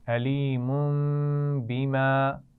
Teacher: تنوین کے بعد با آ گیا ہے، تو ہم غنہ بھی کریں گے اور میم سے بدل کر پڑھیں گے